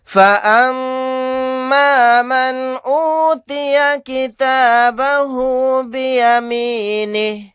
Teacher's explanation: میم کے اوپر تشدید ہے، غنہ کر کے پڑھیں گے، نون ساکن کے بعد حمزہ آ گیا الف کی شکل میں، یہاں پر اظہار کر کے پڑھیں گے، یہاں پر اظہار حلقی کا قاعدہ ہوگا۔